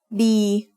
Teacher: Đi is mid-tone because it has a middle-class consonant with a long vowel, which gives a live ending.